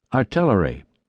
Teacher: a sharp T followed immediately by a short I